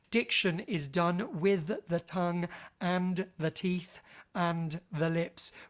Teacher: We've got so many lingual dentals in there.